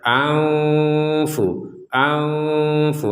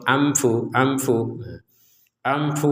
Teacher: harus mematuhi hukum tajwid maka ini harus menjadi samar aufu aufu ada unsur dengungnya tapi tidak 100% nah yang dikatakan dengan samar itu adalah antara jelas dan dengung